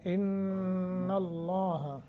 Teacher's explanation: इन्न अल्लाह नून के ऊपर शद है, नून मुशद्दत है, गुन्ना करके पढ़ें। लफ्ज़ अल्लाह को मोटा करके मुंह भर के पढ़ना है। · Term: तफखीम